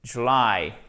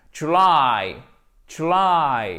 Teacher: Et vous faites traîner la fin du mot, puisque l'accentuation, elle se trouve sur cette seconde syllabe.